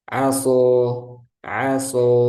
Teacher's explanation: sebelumnya huruf tebal contohnya Shad ee setelahnya huruf alif maka alifnya ini Tebal juga